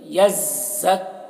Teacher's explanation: زا میں بھی تشدید ہے اور کاف میں بھی تشدید ہے تو ایک دوسرے سے ملے گا، یزک، کا سختی کے ساتھ میں پڑھنا ہے تشدید والے حرف کو.